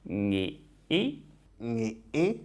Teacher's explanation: it's also glottalized you'll hear some creaky type Voice or you could put a glottal stop in the middle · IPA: [ŋi˧ˀ˥]